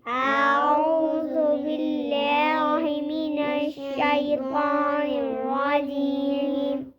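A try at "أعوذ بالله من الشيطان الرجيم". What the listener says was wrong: शै ना पढ़ो बेटा, शै नून की आवाज नहीं आनी चाहिए, तो गुना बन जाएगा। शैतानिर रजीम।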